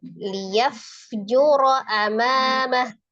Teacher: ro fathah ya, dibaca tebal tafkhim tapi dia tidak panjang karena hamzanya berharakat. Pendek ya, di sini liyaf juro amamah.